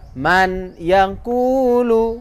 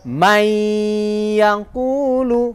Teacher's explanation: memasukkan suara nun sukun kepada ya pada huruf yang hidup setelahnya dan berdengung pada huruf pertama sehingga menjadi panjang. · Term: idgham bi gunnah